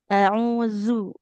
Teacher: Huruf zal ujung lidah ke ujung gigi seri atas.